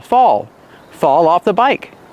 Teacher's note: Use the aw sound like ball and call.